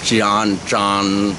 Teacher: n is nasal. So an, so the end of it is your nose. So your the mouth is closed.